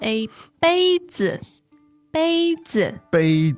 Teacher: now that sounds to me like a first tone and a neutral